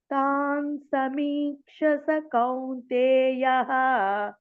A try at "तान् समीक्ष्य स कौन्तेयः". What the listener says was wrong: సమీక్ష యా కూడా రావాలి అక్కడ క్ష కింద యా కూడా ఉంది తాన్ సమీక్ష్య స